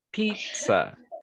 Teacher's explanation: the root word is pizza so the stress is in the first syllable